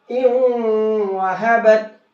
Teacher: इस नून साकिन को वाव में मिक्स कर देंगे और नून को कर देंगे खत्म